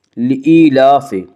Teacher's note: لإيلاف قریش، لإيلاف یا مدہ وہ یا جو ساکن ہو اور اس سے پہلے زیر ہو، یا مدہ کو 1 الف کے برابر کھینچ کر پڑھیں گی۔